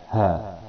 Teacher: h ini berada pada pangkal tenggerokan dekat dada